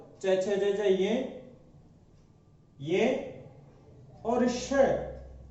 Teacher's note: इसी प्रकार ई चू अर्थात चवर्ग, च छ ज ज ये और श, इसके उच्चारण स्थल होते हैं तालु। इसीलिए ये वाला स तालव्य श कहलाता है।